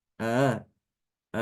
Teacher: Namanya tasil itu dia membaca antara hamzah dengan alif. Dia tidak dibaca a tapi juga tidak dibaca ya ma gitu.